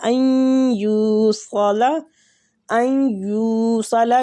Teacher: یہ بھی مد جائز منفصل ہی ہے، ان یوصل، ان یوصل، یو کے ساتھ حمزہ کو ملائیں گے اور وہ مد بھی ہو رہا ہے